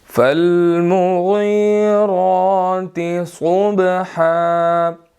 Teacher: را کے اوپر کھڑی زبر ہے، ہم نے اس کو موٹا ادا کرنا ہے